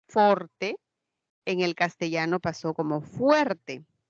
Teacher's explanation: también se dio la diptongación de la vocal o si en el latín se tenía la palabra Forte Forte en